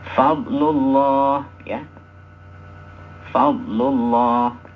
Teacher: mad yang panjangnya Hanya dua harakat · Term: Mad thii